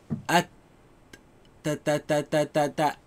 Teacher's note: Ta and the kaf. So, the ta comes from the roots of the upper teeth.